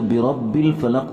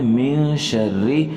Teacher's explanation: را کے نیچے حرکت ہے، اس لیے یہ موٹے سے باریک ہو چکا ہے